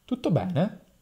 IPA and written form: ˈtutto ˈbɛne (tutto bene?)